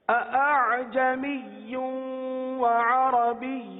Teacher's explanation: پہلی ادائیگی میں دونوں حمزہ تحقیق کے ساتھ ہوئے، جو کہ غلط ہے کیونکہ ہمیں دوسرے حمزہ میں نرمی کرنی ہے.